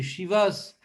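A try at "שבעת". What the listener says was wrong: Shivat, Shivat, pas Shivas.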